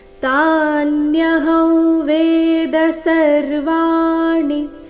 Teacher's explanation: ಅನುಸ್ವಾರದ ಉಚ್ಚಾರಣೆ ನಾಸಿಕ ವ ರೀತಿ ಕಾರಣ ಮುಂದಿನ ಶಬ್ದ ವೇದ ಅವರ್ಗೀಯ ವ್ಯಂಜನ ವ ದೊಂದಿಗೆ ಪ್ರಾರಂಭ ಆದ ಕಾರಣ